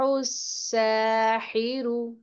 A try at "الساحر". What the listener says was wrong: ये सीन है, सौद नहीं है, इसको पुर नहीं करेंगे आप, बारीक पढ़ेंगे, सीटी की आवाज आएगी।